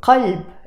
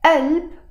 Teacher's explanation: But we don't pronounce it as qalb in Lebanese Arabic. We will pronounce it as alb, and that's the case with all the words that have the qaf, almost all the words that have the qaf in Lebanese Arabic.